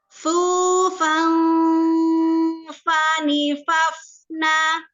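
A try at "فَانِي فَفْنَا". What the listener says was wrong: Faninya jangan fani, jangan dinaikkan.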